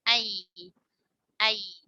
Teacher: Ya tidak terlalu banyak yang menempel ke langit-langit.